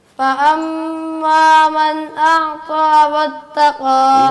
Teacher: ابھی غنہ پورا نہیں کیا، تھوڑا سا غنہ اور کرنا ہے. فأما من أعطى واتقى واتقى واو کے وقت ہونٹ گول کرنے.